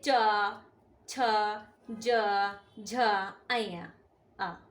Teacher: इन्हें बोलने के लिए जीभ के बीच का हिस्सा मुंह के तालू को छूना चाहिए। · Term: च वर्ण